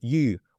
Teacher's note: the word for fish in Chinese and it's u with like a rising tone